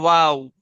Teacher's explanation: दोनों होठों से है, दोनों होठों की गोलाई से है